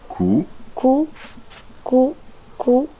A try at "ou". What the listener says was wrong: Non, ça c'est le son ou, pas cou. Ou.